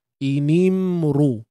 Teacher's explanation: ra ini jangan lupa kita tebalkan dan pada masa yang sama muncung bibir mulut.